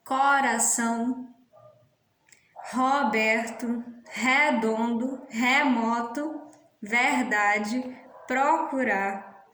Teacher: a principal marca dos falares nordestinos são as vogais E e O, pronunciadas abertas quando vem na sílaba pretônica